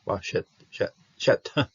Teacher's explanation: There's a dagish in here, so you're going to have to punch the T a little bit, the tau.